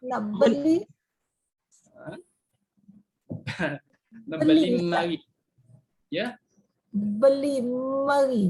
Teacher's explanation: Awal-awal perkataan dah ada sabdu, Kelantan dengan Terengganu lah yang ada sabdu awal.